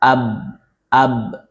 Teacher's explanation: infitah, terbuka, posisi lidah tidak menempel pada langit-langit mulut